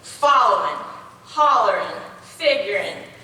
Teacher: Where's the emphasis? That we emphasize the first syllable